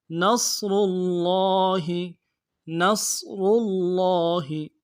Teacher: را کو موٹا ادا کرنا ہے اور لام کے ساتھ ملانا ہے۔ لام کے اوپر تشدید ہے، زور دینا ہے، کھڑا زبر ہے، ایک الف مقدار میں کھینچنا ہے۔